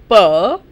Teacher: In P, both my lips are coming together.